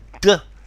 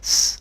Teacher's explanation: So d is voiced, but s is unvoiced.